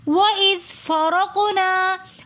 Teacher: ہم زال کو نرمی کے ساتھ پڑھیں گے، زال کے اندر ہم سیٹی بالکل نہیں کریں گے۔ وَإِذْ اگر ہم زال کے اندر سیٹی کریں گے تو یہ بن جائے گا وَإِذْ، اور پھر زال زا کے مخرج میں تبدیل ہو جائے گا، جو کہ لحن جلی کی غلطی ہو جاتی ہے۔